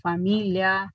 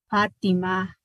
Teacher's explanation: Un contacto de los dos labios, ¿verdad? Es más bilabial que labio dental.